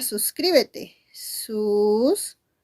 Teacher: Y en esa palabra que tiene 4 sílabas, ¿dónde está la mayor fuerza de voz? Profesora, en cri. Por lo tanto, esa sería tu sílaba tónica.